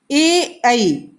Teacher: ए ऐ कंठ और तालु से इसका संबंध होता है, कंठ और तालु से इनका उच्चारण कंठ और तालु से होता है ए ऐ।